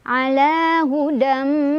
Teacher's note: Hudam ada idgham bi gunnah karena ada tanwin fathah bertemu dengan huruf mim. Cara bacanya langsung masukkan tanwin fathahnya ke huruf mim. Sambil jangan lupa didengungkan dulu, ditahan dulu. Ala hudam. Tuh, nahan dulu ya.